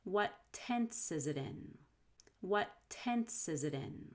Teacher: between it and in you'll have a fast d so it'll be zidane zidane what tense is it in what